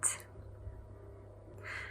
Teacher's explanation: So instead of saying /rɪsiːpt/, it should be pronounced /rɪˈsiːt/. Notice that the stress is on the second syllable